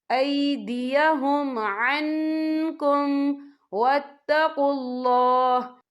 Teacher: तो हम यहाँ इक्फा करेंगे, नून साकिन की आवाज़ को नाक में छुपाएंगे